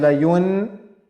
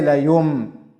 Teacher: the sound of noon gets changed into sound of mim. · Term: iqlab